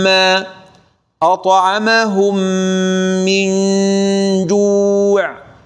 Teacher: هنا ندغم ونضغط على الشفتين ونأتي بشدة خالصة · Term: إدغام